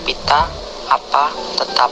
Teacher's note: konsonan P kriteria bunyi bilabial hambat tak bersuara